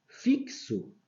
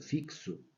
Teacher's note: fixo x com som de KS igual aqui em cima do táxi